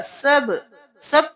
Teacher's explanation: با پہ قلقلہ ہے، آواز پلٹ کے واپس آئے گی